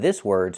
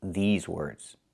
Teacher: We have to use the long e like green beans. I cannot use the short i like this is.